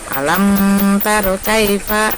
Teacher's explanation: Cara membacanya izhar ya, dibaca jelas dengan mulut tertutup.